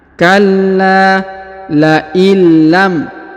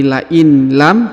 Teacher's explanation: dengan lam bertasdid maka ditahan dan ditekan dan huruf nun sukunnya menghilang melebur masuk ke huruf lam ya menghilang dan melebur masuk ke huruf lam yang bertasdid contohnya Kalla laillam Jadi bukan lagi La in lam tapi Lail